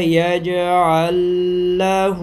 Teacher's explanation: پہلے لام کا دوسرے میں ادغام کیا تو بن گیا یجعل لہ.